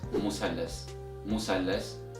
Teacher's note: in Egyptian Arabic dialect, this word is pronounced as musallas, musallas with the S sound instead of Th sound.